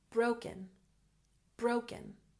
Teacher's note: broken stress the first syllable